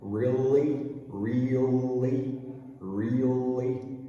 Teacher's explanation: this time we're going from the E sound to the dark L, and then right into a light L again